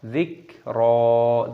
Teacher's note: jangan sampai kaf ini diqalqalah ataupun dipantulkan suaranya, kita baca dziqra.